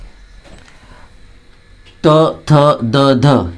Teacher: यांचा उच्चार करताना आपल्या जिभेचा स्पर्श समोरच्या वरच्या दाताच्या मागच्या बाजूला होतो ठीक आहे म्हणून यांना दंत्य म्हणतात प फ ब भ हे